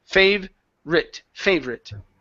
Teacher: So the O is gone. We don't pronounce that at all.